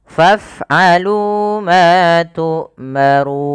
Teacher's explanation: dibaca dengan ro tafkhim tebal kemudian dipanjangkan boleh dua harakat boleh empat harakat dan boleh pula enam harakat karena dia ada bacaan Mad Alif